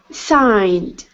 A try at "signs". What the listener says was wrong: Okay, so right now you're pronouncing a T at the end. You're saying signed. Instead of signed, it's an S. Signs.